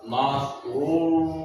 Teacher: Cara bacanya dibaca tebal dan dipanjangkan 2 harokat.